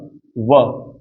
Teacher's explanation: व में एक तो ओठों का प्रयोग हुआ और एक दांतों का हुआ, तो इसमें दंतोष्ठ हो जाएगा, नहीं दांत और ओष्ठ मिलके आपके कौन से बनेंगे, आपके दंतोष्ठ बनेंगे।